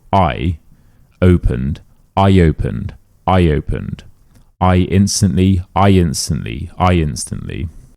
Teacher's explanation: If one word ends in an e, an i, or an a, and the next word begins with a vowel, we add a y. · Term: the y rule